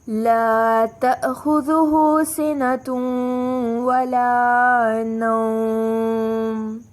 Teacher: نوم، واو کو نرمی سے ادا کرتے ہوئے مد دیں گے